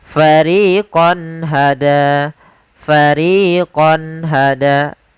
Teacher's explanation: Karena izhar adalah menjelaskan, menampakkan suara nun sukun dan tanwin dengan jelas tanpa disertai gunnah